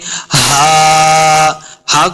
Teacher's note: ہا کو حلق کے نچلے والے حصے سے ادا کرنا ہے.